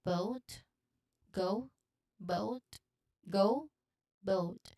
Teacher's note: Go is pronounced just like that with a diphthong O. · And you kind of like end it with a slight ooh sound.